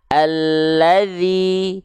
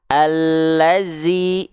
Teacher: Karena mengganti dzal menjadi zai. Yang harusnya kita baca alladzi, kita baca menjadi zai.